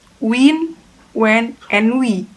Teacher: The sound is formed by the two lips approximating closely but not so close that friction is generated. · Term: bilabial approximant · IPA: /w/